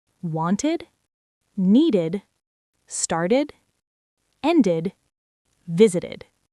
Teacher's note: If I tried to say want to, my tongue would get completely stuck. So, we add the id sound to make it easier to say · after t or d, it's id, an extra syllable. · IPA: /ɪd/